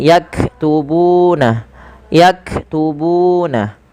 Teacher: panjangkan bu sepanjang dua harakat karena ia mad thabi'i